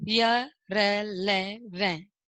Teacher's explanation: इनका उच्चारण जीभ, तालु, दांत और होठों के निकट आने से होता है, किंतु श्वास में रुकावट कम होती है, क्योंकि ये हमारे मुख से फटाफट निकल जाता है यह रेलेवेंट, तो इसलिए हम स्पष्टतः ये निष्कर्ष नहीं निकाल पाते हैं कि हमारी जीभ है वो किस किस भागों को स्पर्श कर रही है। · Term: अंतस्थ व्यंजन